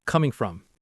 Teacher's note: The coming from often sounds very linked together.